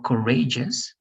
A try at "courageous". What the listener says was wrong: Courageous.